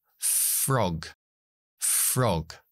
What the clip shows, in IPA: frɒg